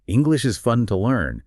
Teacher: you're trying to hit that emphasis on fun, that little lift in their voice that makes it sound natural